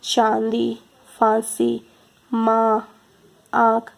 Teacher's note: जिस स्वर के उच्चारण में हवा मुख और नाक से निकलती है, वह ध्वनि अनुनासिक होती है। इसमें स्वर के ऊपर चंद्र बिंदु का चिन्ह होता है, जैसे चांदी, फांसी, माँ, आँख।